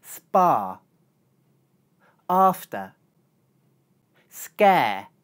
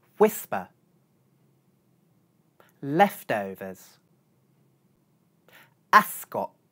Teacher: although these words contain the letters p, t and c they contain no aspiration.